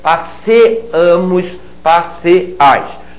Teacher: Observem que em nós e vós o ditongo desaparece.